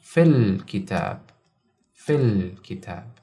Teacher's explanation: we completely ignore this hamza and continue to the next consonant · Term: hamzat al-wassal